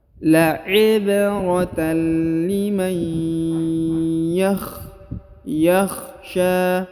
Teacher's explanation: Huruf nun sukun bertemu dengan ya, kaidahnya ditahan, ditekan, didengungkan. Huruf nun melebur dan menghilang ke huruf ya.